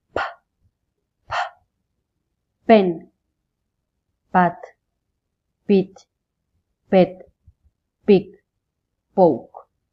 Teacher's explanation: You won't feel any vibration because P is an unvoiced consonant. The sound of P is P, P, P.